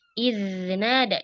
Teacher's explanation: Punya sifat rikhwah, hadirkan. Iznada, jangan terburu-buru. Alirkan suaranya baru ke huruf nun yang ada di kata nadahu.